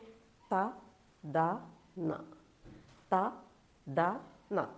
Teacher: ദന്ത്യങ്ങൾ എന്നാണ് അതായത് പല്ലുമായിട്ട് ബന്ധമുള്ളതുകൊണ്ടാണ്